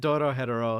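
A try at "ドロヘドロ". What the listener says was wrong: Why do you say it like hetero? Why do you say it like hetero? Doro Hedoro.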